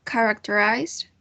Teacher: The stress syllable is the first one, characterized.